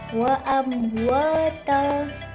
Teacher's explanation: mim sukun bertemu dengan huruf waw, dibaca dengan jelas tanpa dengung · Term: izhar syafawi